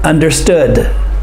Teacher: the final consonant is quiet